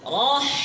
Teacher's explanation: এখানে খেয়াল রাখতে হবে, র তো এখানে মোটা, আওয়াজ উপরে উঠবে, জিহ্বার গোড়া উপরে উঠবে। র থেকে যখন হাতে প্রবেশ করব তখন আওয়াজ নিচে চলে আসবে, ঠিক আছে? এমন না রহ, হায়ের আওয়াজ উপরে না, হায়ের আওয়াজ নিচে।